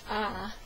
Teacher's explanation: the vowel in this set ah is made near the back of the mouth and with the mouth open